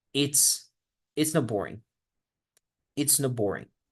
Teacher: la T absorbe a la B, entonces se convierte como si dijéramos aquí una P. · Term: asimilación